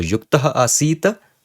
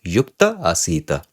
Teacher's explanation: So this is clearly a visarga lopa sandhi, because aha, this is being followed by an anya vowel, a different vowel, so visarga lopa happens.